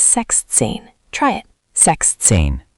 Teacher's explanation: 16 is sechzehn, 16. Important, sechs loses the final S sound in the middle. Not sechzehn, but sechzehn.